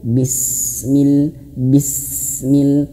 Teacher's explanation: Dan termasuk juga kalau huruf sin, huruf sin juga dia termasuk hames. Makanya kalau dia sukun ditahan dulu.